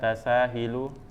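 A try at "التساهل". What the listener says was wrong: Tasahul. Berarti masdar dari tafa'ala, tafaul, di dhammah huruf sebelum terakhir.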